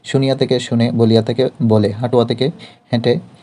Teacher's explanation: বাক্যের শব্দের মধ্যে ইয়া এবং ওয়া শব্দ দুটি লোপ পেয়ে যায় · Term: অভিশ্রুতি